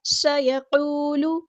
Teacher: قاف ہمارا ہیویٹر ہے، پورا ادا کریں گے، موٹا ادا کریں گے۔ واؤ مد آ گئی ہے تو ایک الف کے برابر ہم اس کو لمبا کریں گے۔